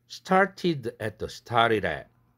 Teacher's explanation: t와 드가 다 플랩되네요.